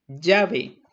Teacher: el rasgo lateral el aire pasa rozando en los lados de la cavidad bucal como la letra l o la doble l de llave llave